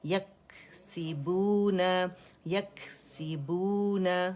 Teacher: سخت تالو کو جب ہماری زبان کی جڑ لگے گی، ٹھیک ہے، تو کاف ادا ہوگا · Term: ہمس